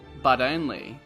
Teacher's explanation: for Americans and Australians the T becomes a flap